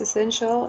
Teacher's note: It has also 3 syllables. And the stressed one is the second one.